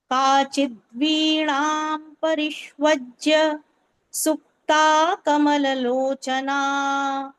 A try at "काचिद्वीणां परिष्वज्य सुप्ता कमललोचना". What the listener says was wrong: Excellent. I love how you say the nakaraha, kachit veenam, the nakaraha that you say is very, very sweet to hear.